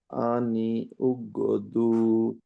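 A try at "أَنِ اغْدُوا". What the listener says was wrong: আনি উক কেন হবে? হামজাতুল ওয়াসিল তো পড়বো না, আনি গিদু।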